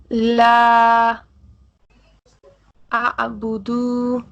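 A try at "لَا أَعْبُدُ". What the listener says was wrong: اب دیکھیں یہ آ کے بعد جو ہے، دیکھیں میں اس کو ہائی لائٹ کر رہا ہوں، یہ کیا ہے مجھے بتائیے. دال پیش دو. اسٹریچ ہوگا یا without stretching? But you are stretching. لا اعبد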